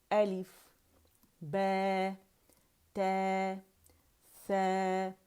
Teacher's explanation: اس میں ہم نے امالہ نہیں کرنا، ہم نے زبان کا درمیانی حصہ نہیں اٹھانا